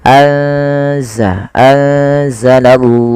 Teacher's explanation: Kemudian pada lafal anzala ada nun sukun ditandai dengan warna nun yang berwarna hijau dan tidak berharokat ini bertemu dengan salah satu huruf ikhfa yaitu huruf zai. Maka cara membacanya yaitu memasukkan nunnya atau menyamarkan nunnya kepada huruf zai. Ya, anza langsung kepada makhraj daripada huruf zai.